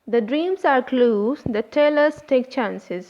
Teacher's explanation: Here the underlined words are stressed syllables like dreams, clues, tell, take